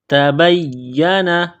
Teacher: یا مشدد ہے تو یا کو دبانا ہے، سختی کرنی ہے